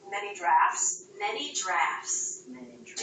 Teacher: did you notice how she dropped the tea we do this a lot when the tea comes between two